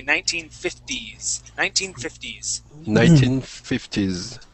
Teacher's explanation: instead of using that t sound there we want to use a D sound